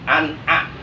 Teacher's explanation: Cara membunyikan atau membaca ijhar halqi yang benar menurut ilmu tajwid adalah nun matinya atau tanwinnya mesti dibaca jelas berbunyi en dan tidak boleh digunakan atau tidak boleh ditahan atau didengungkan